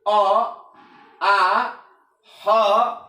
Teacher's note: तो कंठ और निचली जीभ के स्पर्श से, ये जो जीभ है जीभ के नीचे वाला भाग, तो कंठ और जीभ के नीचे वाले अंग के स्पर्श से जिस वर्ण का उच्चारण होता है उस वर्ण को हम कंठ वर्ण के नाम से जानते हैं।